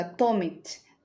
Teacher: En la reducción vocálica en inglés los fonemas vocálicos no acentuados se acortan y se centralizan transformándose en una vocal schwa